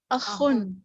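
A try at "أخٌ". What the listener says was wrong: جی اخن نہیں، خا پر شد نہیں پڑھنی، اخن تھوڑا سافٹ کر کے پڑھنا ہے.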